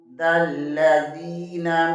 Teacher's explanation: دال زبر کو لام کے ساتھ ملائیں گے، لام شدد ہے، اسے 2 بار پڑھیں گے